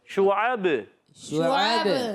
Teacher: شعب، اب شین پر پیش ہے اور عین پر زبر ہے، حرکات ہے، حرکات کو تو نہیں کھینچیں گے، مگر با کو ہم وقف میں ساکن کر دیں گے اور کلکلا بھی کریں گے، شعب، شعب اور شین جو ہے حرف تفشی ہے، حرف تفشی بھی ہے، حرف شجریہ میں بھی ہے شین، جیم شین یا زبان کے درمیان اور تعلق کے درمیان سے ادا ہوتا ہے۔